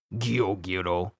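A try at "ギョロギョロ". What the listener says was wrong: Gyoro. Not Gyo, but it's Gyoro.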